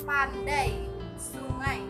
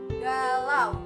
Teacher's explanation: Nah, jadi dalam kata yang mengandung diftong tersebut kita dapat merasakan perubahan warna bunyi A pada sungai, pandai, dan galau ke arah bunyi semi vokal Y dan W